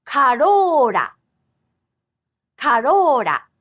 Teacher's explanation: this sound written with R is actually somewhere between English L and D. For example, the Toyota Corolla in Japanese actually has this same consonant twice.